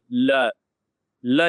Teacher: आप ल बोलेंगे ना, ल, तो जीभ देखना आपके साइड में हवा निकालती है, दोनों साइड की जीभ, ल, ल जैसे ही बोलेंगे वैसे दोनों साइड पे जीभ थोड़ा सा टच करेगी, ल, और ये पार्श्व एकदम से हवा साइड से निकलती, दोनों साइड से, पार्श्व, ल, ठीक है। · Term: पार्श्विक